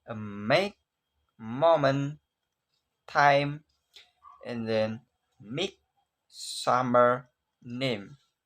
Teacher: See what happen when you pin your nose, a sound will stop. Vocal cord will vibrate because M is a voice sound, voice consonant, so called voice bilabial nasals · lips are closed, that means the air cannot escape through mouth. Instead, the air escape through the nose. That exactly why we call nasals.